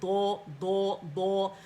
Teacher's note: दो की आवाज़ मोटी है और ये साइड से आएगी, दो दो दो, तो आपने मोटा दाल नहीं अदा करना, दौद ही अदा करना है।